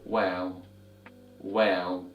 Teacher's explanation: of Arabic in the next course but anyway little while is a labial letter which means you use both of your lips to pronounce this letter and to get the sound of the letter well just simply